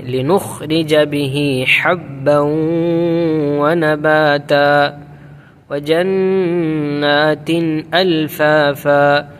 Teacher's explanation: چھوٹا ہا نہیں پڑھے، بڑا ہا پڑھیں گے